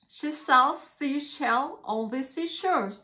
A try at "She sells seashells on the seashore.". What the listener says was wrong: She sells seashells. It's this SZ sound on the end, isn't it? Seashells.